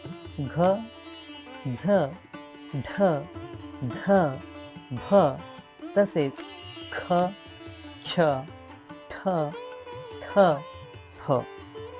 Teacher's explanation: महाप्राण म्हणजे ज्यात ह ची छटा आहे